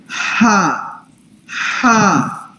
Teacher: اس کو آپ نے ادا کرنا ہے بالکل حلق کے درمیان سے. ٹھیک ہے، حلق کے بالکل درمیان سے، جو یہ سینٹر ہے جہاں پہ یہ ہڈی ہے.